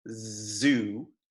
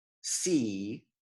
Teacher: Voiced sounds make our throat vibrate, like zoo, and unvoiced sounds do not make our throat vibrate, like see. And this concept of voiced and unvoiced sounds changes the way certain vowels are pronounced in English.